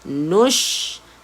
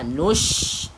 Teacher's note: salah satu sifat huruf shin iaitu tafashi, dia ada semburan.